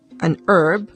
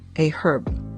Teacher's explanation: in the united states the h in herb is silent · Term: silent h